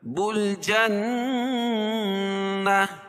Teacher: نون مشدد ہے، اس میں غنہ ہوگا